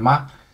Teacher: it's quite a high pitch, and once you pronounce it, you don't change the pitch. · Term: first tone